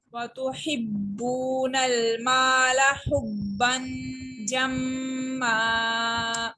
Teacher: با مشدد ہے چونکہ یہ کلکولا لیٹر ہے، اور جب مشدد ہوتے ہیں کلکولا لیٹرز تو وہ پریس کر کے اور رک کر پڑے جاتے ہیں۔ واو مدہ کو ون فنگر اسٹریچ کیا ہم نے، الف مدہ کو ون فنگر اسٹریچ کیا، یہاں پہ با کو پھر ہم نے مشدد ہے تو پریس کر کے ریڈ کیا، اور یہاں پر ہم نے میم مشدد پہ غنہ کیا ہے۔